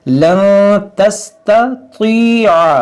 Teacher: यहाँ पर नून साकिन के बाद ता, यहाँ पर इख्फा होगा।